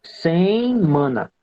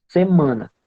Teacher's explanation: A gente primeiro diz sem, nasaliza, sem mana. E no segundo caso é direto, semana.